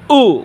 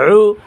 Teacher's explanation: হামজা পেশ উ গলা শুরু হইতে, আইন গলার মাঝখান